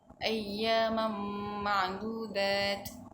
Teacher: Bacaan tanwin dimasukkan dalam huruf mim dan dihilangkan bacaan yang seperti huruf nun.